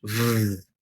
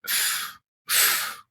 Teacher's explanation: when you say the letter V in English V you can feel your throat vibrating · so there's no vibrating of your vocal cords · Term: not voiced